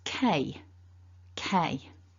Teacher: we've got the k sound at the beginning, which is not voiced, and then we've got a double vowel, which when we pronounce it is A.